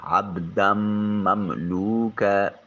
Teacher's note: مثلا عبدا، دال کو میم کے ساتھ ملائیں گے، عبدا مملوکا، با ساکن ہے، قلقلہ واجب ہوگا، قاف طا با جیم دال، جہاں یہ حروف ساکن آ جائیں تو آواز اپنے مخرج پر لگ کر ٹکرا کر واپس پلٹتی ہے۔ دال کے اوپر تنوین جو ہے، یہ نون تنوین کے بعد حروف یرملون میں سے مملوک میں میم آ گیا تو اس کو نون کو میم کے ساتھ ملائیں گے، اس کو ادغام کا قانون بھی کہتے ہیں۔